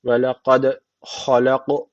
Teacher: cezim aldığı için kalkale teceti var. Birazcık vurguluyoruz.